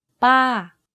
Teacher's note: my pitch went up and then down very slightly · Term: falling tone